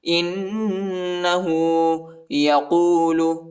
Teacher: حمزہ کو نون کے ساتھ ملائیں گے اور نون پر غنہ کریں گے۔